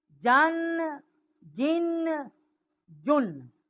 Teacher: ان کا مخرج وسط زبان اور اس کے مقابل اوپر کا تالو ہے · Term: شجریہ حروف